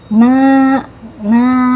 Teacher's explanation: fathah bertemu dengan alif ya bertemu dengan alif jadi panjangnya dua harakat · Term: Mad thobii